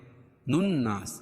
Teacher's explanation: نون مشدد، میم مشدد میں غنہ ہوتا ہے، اس پہ غنہ کریں گے